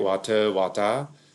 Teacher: in australian it would be more of an ah